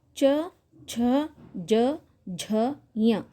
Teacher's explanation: ದವಡೆಯ ಮಧ್ಯದಲ್ಲಿ ದವಡೆಯ ಸಹಾಯವನ್ನ ಪಡೆದುಕೊಂಡು ಹುಟ್ಟುವಂತಹ ಅಕ್ಷರಗಳು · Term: ತಾಲವ್ಯ ಅಕ್ಷರಗಳು